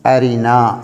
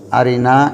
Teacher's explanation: ராவுக்கு கஸ்ரா வரக்கூடிய நேரத்திலே உதாரணமாக அரினா என்ற வார்த்தையிலே போல, அரினா என்ற வார்த்தையிலே நாங்கள் சொல்லும்போது ராவுக்கு கஸ்ரா வருகிறது. எனவே இவ்வாறான சந்தர்ப்பங்களிலே ராவை நாங்கள் மெல்லினமாக மொழிய வேண்டும்.